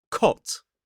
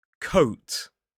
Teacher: they're kind of short O vowel sound and a longer gliding O sound, where it moves from the middle of the mouth more up.